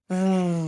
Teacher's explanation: You have this friction sound and you feel the vibrations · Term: V sound